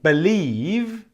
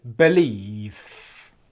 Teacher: most people when you get the V sound at the end of a word will pronounce it with F pronunciation